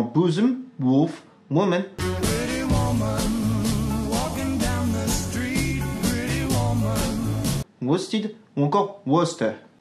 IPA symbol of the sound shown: ʊ